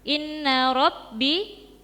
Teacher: inna ada bacaan ghunah musyaddadah yaitu nun yang bertasydid